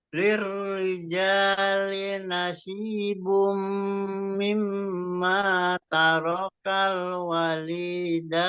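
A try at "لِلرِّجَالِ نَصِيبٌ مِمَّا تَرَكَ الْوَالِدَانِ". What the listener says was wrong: wa-nya 2 harokat. Tarakal walida. wa-nya 2 harokat.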